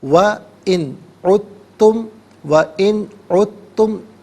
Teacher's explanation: نون ساکن کے بعد عین حرف حلقی ہے تو نون ساکن کو اظہار کے ساتھ پڑھیں گے، غنہ یا اخفا نہیں کریں گے